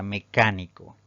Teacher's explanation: Si dividimos en sílabas, esta palabra tiene 4 sílabas, pero al pronunciarla la mayor fuerza de voz recae en la antepenúltima sílaba contando de derecha a izquierda, entonces es una palabra esdrújula y debemos colocarle tilde siempre.